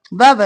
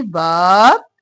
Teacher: الف مدہ ہے، کھینچیں گے، باب اور با جلدی سے حرکت ہے